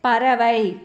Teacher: ஐகாரம் சொல்லின் இறுதியில் வரும்போது ஒரு மாத்திரை அளவில் ஒலிக்கும்